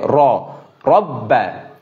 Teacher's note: র মোটা করে হবে, মুখটা গোল হবে